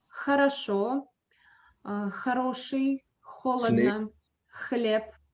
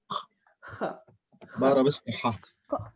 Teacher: you have to make an obstruction with the back of your tongue there, like it is showed here, like this. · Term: the Russian sound Х